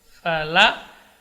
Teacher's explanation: Kemudian berikutnya huruf la, fala, terus setelahnya qaf yang sukun. Jadi di sini tidak boleh lamnya ditebalkan. Fa dengan lam kedua-duanya huruf tipis.